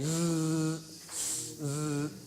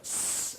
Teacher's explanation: If you say an S followed by a Z or a Z, and you put your fingers in your ears, try it and see, go S and then Z, Z. The noise you hear with the Z, which you don't hear with the S, is the vocal cords vibrating. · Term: voiced